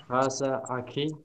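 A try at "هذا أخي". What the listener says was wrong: Hadza, jelas tunggu dulu. Kasih jelas dulu huruf zalnya, zal. Hadza akhi, coba.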